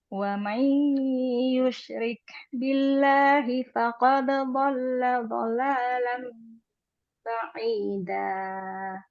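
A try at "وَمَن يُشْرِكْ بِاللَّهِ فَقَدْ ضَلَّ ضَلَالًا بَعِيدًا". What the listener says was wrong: Ah, bagus.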